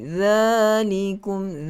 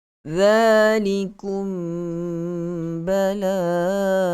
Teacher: keluar lidah, sentuh pada dua gigi kacip bahagian hadapan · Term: huruf dha